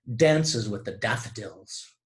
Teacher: A repetition of that alveolar voiced plosive, D. Now this type of consonants where the consonant that is being repeated occurs at the beginning of words, as you may know, is referred to as alliteration.